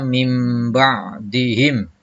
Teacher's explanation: yaitu bak nun mati ketemu dengan atau tanwin bertemu dengan Ya maka membacanya nun mati atau tanwin digantikan dengan huruf mim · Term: iqlab